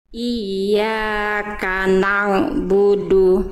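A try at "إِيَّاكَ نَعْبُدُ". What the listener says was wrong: Na'budu. Jadi coba Bunda lafalkan ain gimana? Jadi ain Bunda udah bagus, cuman masih masuk hidung. Iyyaka na'budu.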